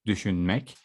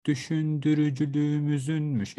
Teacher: I have a round vowel in the end of my root word, which is to think, düşünmek.